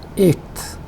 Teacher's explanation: The word eighth, when you pronounce, the pronunciation of ta is affected by the last th sound, which is actually a dental sound, which is produced with the help of the tongue in between the upper jaw and the lower jaw, and therefore the pronunciation is changed a bit, and this is represented as this symbol.